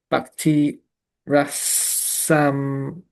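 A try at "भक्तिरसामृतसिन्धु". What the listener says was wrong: Rata? Rasamrita, not Rata. The R with a dot under like in Krishna. It's not Krishna. It's Krishna. It's the same. Rasamrita. Bhakti Rasamrita Sindhu.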